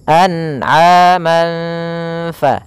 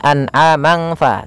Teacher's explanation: samarkan suara tanwinnya atau suara nunnya. Kalau di sini tanwin berarti samarkan kepada huruf fa. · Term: ikhfa